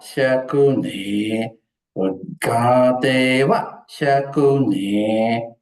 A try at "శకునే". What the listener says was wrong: శకునే అనుదాత్తం అండి కిందకి శకునే